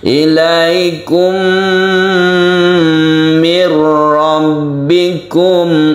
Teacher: Dikarenakan cara membacanya itu berbeda. Karena mim bertemu dengan mim otomatis membentuk tasydid. Yang tasydid mim itu dibacanya adalah gunnah atau kita panjangkan. Kita tahan ketika membaca ini. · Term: idgham mimi